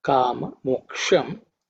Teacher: This ksha is actually cerebral ksha.